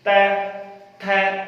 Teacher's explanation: त वर्ग त बिना जिह्वा को दांतों से टच किए आप त वाली पूरी लाइन नहीं बोल सकते। त थ जिह्वा को दांतों से टच करना पड़ेगा, दंत को टच करेगी, छुएगी, ऐसे तो नहीं बोला जा सकता।